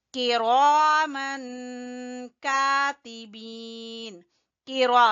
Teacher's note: रा को पुर पढ़ेंगे और तनवीन के बाद काफ है तो यहाँ इख्फा होगा।